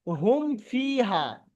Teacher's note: মিম সাকিনের পরে ফা এসছে। ফা, অর্থাৎ বা এবং মিম ছাড়া অন্য অক্ষর এসছে। সেই জন্য এখানে গুণনা হবে না। বিনা গুণনায় স্পষ্ট করে তাড়াতাড়ি পড়তে হবে।